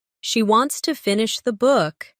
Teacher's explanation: Stress wants and book, and let to finish the be soft and fast.